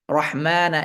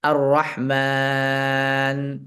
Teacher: এই যে আমরা থামবো থামার মধ্যে আমরা কতটুকু সময় নিয়ে থামবো চার সেকেন্ড অথবা ছয় সেকেন্ড সময় নিয়ে থামবো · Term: মাদ্দাস সুকুন